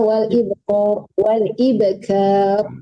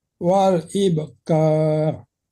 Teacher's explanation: Jangan tebalkan kafnya tipiskan.